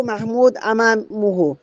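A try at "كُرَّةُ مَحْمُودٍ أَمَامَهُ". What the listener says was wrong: নাই, সাকিন করেন কেন? এখানে তো সাকিন করার কোনো অপশন নাই। কুররাতু মাহমুদিন আমামাহু, কুররাতু মাহমুদিন আমামাহু।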